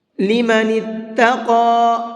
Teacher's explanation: قاف کو منہ بھر کے بھی پڑھیں گے اور ساتھ ساتھ تھوڑا سا یعنی 1 الف کے برابر کھینچ کر کے بھی پڑھیں گے۔